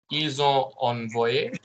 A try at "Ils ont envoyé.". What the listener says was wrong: Why are you stopping? Why have you got ils ont? Do not stop the voice. Ils ont. Keep the voice going.